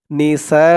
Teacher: সা চার আলিফ টান মধ্যে মুত্তাসিল